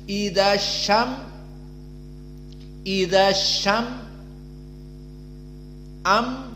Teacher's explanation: mim harus jahar maknanya Jika disukunkan kita baca tanpa keluar nafas coba idyam idyam am maka keduanya tidak boleh keluar nafas dan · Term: jahr